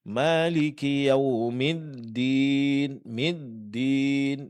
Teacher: Huruf dal dia adalah huruf jahar, sama dengan to. Dalam pengucapannya tidak boleh keluar angin. Ah, kesalahan yang terjadi, ya, kita memberikan sifat hamas pada huruf dal.